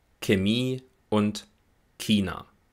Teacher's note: Vor allem im Süden Deutschlands spricht man hier aber ein K